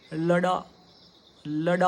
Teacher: जब हम ड का उच्चारण शब्द के मध्य में और अंत में करते हैं तो उसका उच्चारण खड़ी बोली जैसा ही होना है, जीभ को जोर से ही टकराना है नीचे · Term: द्विगुणी